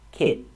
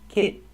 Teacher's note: I make the stop T and go directly to the end sound kit I stop the air with my tongue kit and goly